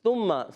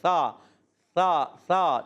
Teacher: سا جو ہے زبان کا سرا اوپر والے دانتوں کے کنارے سے لگائیں گے، سا ادا ہوگا